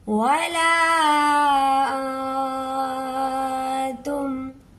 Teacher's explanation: ولا انتم، یہاں پر گنہ سیکھ لیں، اخفا ہوگا، چھپا ہوا گنہ ہوگا کیونکہ آگے تا ہے، تا حروف اخفا ہے. یہاں پر ہمارا گنہ ناک میں آواز روک کے رکھنے سے ہوگا